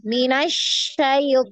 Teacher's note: Sedangkan untuk huruf syin ini dia nyebar nafasnya tu nyebar di mulut